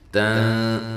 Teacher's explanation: یہ نون تنوین کا اخفا ہے مع الغنہ، باریک اخفا ہے